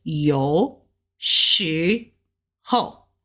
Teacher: we're going to go up with the sh, ho, fast down with the fourth tone